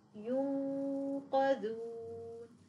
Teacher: سينغلق المخرج تماما اقصى اللسان مع الحنك اللحمي والصوت لم يمر اي جزء منه من الفم انما كله سيمر من الخيش اذا لاحظنا في الكاف والقاف لن · لاحظوا ان الغنه مفخمه لان الحرف القاف · لاحظنا في الكاف والقاف لن يمر صوت من الفم أبدا، إنما الصوت كله من الخيشوم، أما باقي الحروف فهناك جزء من الصوت يمر من الفم، ونقول ينقذون. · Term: الاخفاء, الغنة مفخمة